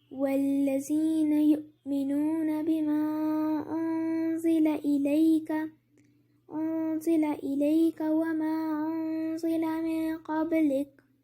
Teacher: उन्ज़िला पे मैंने नून की आवाज़ को नहीं प्रोनाउंस किया, दूसरे वाले उन्ज़िला पे भी नहीं किया, बीच में ज़बान को रखा मैंने। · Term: इख्फा